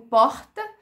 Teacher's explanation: lá na glote, a gente tem aquela consoante que parece uma aspirada